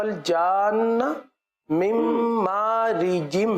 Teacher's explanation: جیم جو ہے نا، یہ چے کی طرح ادا نہ ہو، جیسے آیت پڑھی وَخَلَقَ الْجَانَّ مِن مَارِجٍ ہے، تو مجھے جو آواز سننے میں آئی ہے وہ ریجم، چے کی طرح کی آواز۔